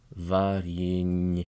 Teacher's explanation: The part of this word that is exceptionally difficult is that soft sign after the N, making it ny, followed by a pronounced ye. Varyenye. Thus you see that the doubled Y between the second to last syllable and the last syllable is actually well merited.